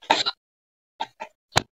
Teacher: Ang mga ponema ay ibinibigkas sa pamamagitan ng pagdiit o pagdikit ng labi sa mga ngipin sa itaas. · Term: panlabing pangngipin